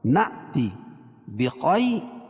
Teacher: بتایا تھا کہ حمزہ کی 4 شکل ہے، کبھی حمزہ اپنی شکل میں ہوتی ہے، کبھی حمزہ کی شکل میں، کبھی واو کی، کبھی یا کی۔ تو یہاں حمزہ جو ہے الف کی شکل میں ہے اور اس کے اوپر جزم ہے تو یہاں جھٹکا ہوگا